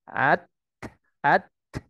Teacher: Ya, jadi dorongan suara dulu, kemudian terbentuk dengan tersentuhnya dua bagian makhraj. Misalnya ujung lidah dengan ujung pangkal gigi seri atas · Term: huruf ta